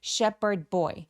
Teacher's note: 여기서는 P 발음으로 H 발음이 묵음됩니다. Sheperd SH는 입술 쭉 내밀고 쉐로 소리 또렷하게 발음해 주세요